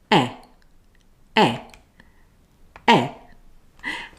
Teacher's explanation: it's a short voiced sound notice my mouth shape lips are spread but only a little my jaw is fairly closed and my tongue is forward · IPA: /e/